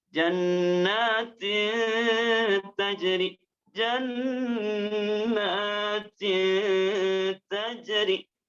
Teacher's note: bukan hanya keluar daripada rongga hidung yang mendengung saja, tapi panjangkan 2 harokat sebagai haknya suara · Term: ikhfa